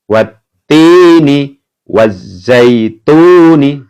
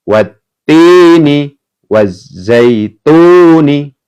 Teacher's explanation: Jadi langsung masuk huruf yang berharokat tasdid, kemudian alif lamnya dianggap tidak ada ya.